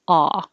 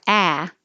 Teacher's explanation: back so the only difference between a and ah is that for hot the lips are straight aw but for ah the lips are back